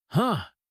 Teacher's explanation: with a slightly rising and then settling tone is a quiet thoughtful sound of processing something unexpected. It is very understated.